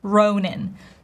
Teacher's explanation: Ronan, diphthong O, stress on the first syllable, Ronan. Saoirse Ronan.